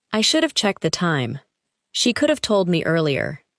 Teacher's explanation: Each phrase contains have, but the word is weak and connected to the word before it.